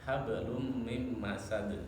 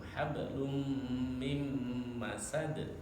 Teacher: Jadi ketika tanwin ketemu mim ya karena bacaan idgham dia ditahan dulu. Fi jidha hablum jangan langsung dibaca hablum mim masad, jangan, harus ditahan dulu.